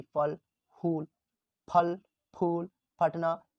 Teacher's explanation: देखिए दोनों का उच्चारण का, इसका उच्चारण स्थान, इसका बिना बिंदु वाला, बिना नुक्ता वाला, दो होंठ, जो दोनों होंठ क्या हो जाएगा इसमें? दोनों होंठ को मिलने से इस फ का उच्चारण किया जाता है